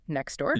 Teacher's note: The T just drops out. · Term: elision